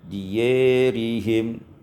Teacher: Ayat 243 diyarihim, imalatu fathatil ya wal alif, diimalakan fathah ya dan alif sehingga kita baca diyarihim.